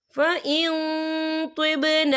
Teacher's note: नून साकिन की आवाज़ को नाक में छुपाएंगे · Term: इफ़ा